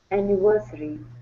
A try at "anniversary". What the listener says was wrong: Give me a good R at the end as well. Anniversary.